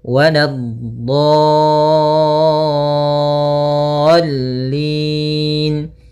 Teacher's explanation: Untuk mad lazim musaqqal kalimi atau kalimi musaqqal panjangnya 6 harakat, maka panjangkan dhatnya dulu 6 harakat, kemudian sempurnakan di dha-nya, kemudian baru masuk ke huruf lam.